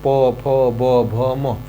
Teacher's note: बोलना शुरू करेंगे प वर्ग को तो वह क्या होगा प ओठ दोनों के दोनों क्या होंगे आपस में संपर्क बनाएंगे